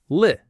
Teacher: The first L in little comes before the vowel I, so it's a light L, li. The tongue tip goes up.